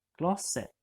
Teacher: as you'll see, the T is silent at the end of that word